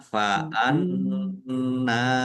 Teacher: Faanna nun fathah berdiri mad thobi'i panjang dua harakat · Lam fathah berdiri mat tobi'i, fa'anna nun tasdid bacaan gunnah, ditahan biar tampak mendengungnya. Fa'anna nun fathah berdiri mat tobi'i, panjang dua harokat.